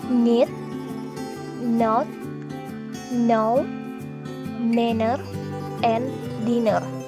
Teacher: It is produced by pressing the tongue tip against the alveolar ridge. The soft palate is down, so the air escapes through the nose. · When we pronounce N, the mouth passage is completely blocked by raising the tip of the tongue to touch the teeth ridge. The soft palate is lowered so that the air can pass through the nose. Thus the vocal cords vibrate. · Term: alveolar nasal